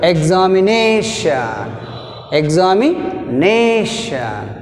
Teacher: we take stress on the second syllable from the end